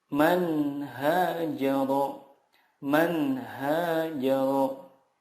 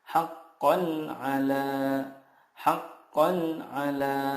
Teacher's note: huruf-huruf idhar di sini makhrajnya adalah dari tenggorokan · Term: idhar halki